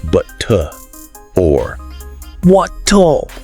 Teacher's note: So instead of a really hard R at the end of a word, butter or water, okay, you might hear something closer to but-tuh or what-tuh. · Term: softened R